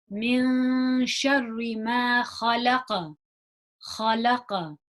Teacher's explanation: we've got that ha it's a nice and Scratchy from the top of the throat · So notice that I'm bouncing on that qaf.